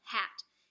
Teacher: pronounce this sound the phoneme is like the word um hat it's a glottal sound because it's pronounced in the back of our throats